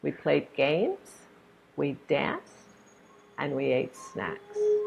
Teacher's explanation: you rise on all of them until the last one and then you fall